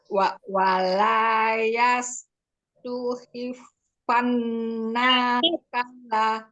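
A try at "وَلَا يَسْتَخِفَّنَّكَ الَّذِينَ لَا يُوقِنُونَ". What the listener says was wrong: Lihatin harokatnya. Wala yas, bukan yus.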